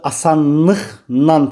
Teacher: Yəni L N-ya keçir, Q x-ya keçir.